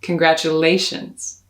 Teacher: I stress the A in congratulations. That's the fourth of 5 syllables. So push the energy and the breath forward so that you can lean into the A sound.